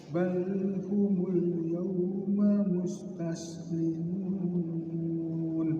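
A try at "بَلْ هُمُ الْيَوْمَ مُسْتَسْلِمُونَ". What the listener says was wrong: Iya bagus, terus.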